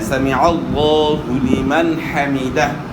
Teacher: عین کو حمزہ سے تبدیل نہیں کرنا۔ سمع اللہ پڑھتے ہیں تو پھر تو عین کے بجائے حمزہ ہو گیا، تو عین کی بجائے حمزہ نہیں پڑھنا، سمع اللہ پڑھنا ہے، سمع اللہ لمن حمیدہ۔ · لفظ اللہ کا نام خوب پر ادا ہوگا، موٹا ادا ہوگا، اور عین کو صحیح ادا کرنا ہے۔